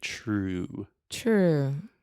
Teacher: really want to round your lips inside true true yeah perfect so true that is like a CH sound honestly in English we should write true with a CH it would make a